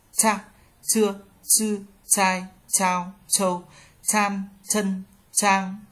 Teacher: Chữ C thẳng lưỡi bật hơi vị trí đầu lưỡi cắm vào mặt sau dáng trên đá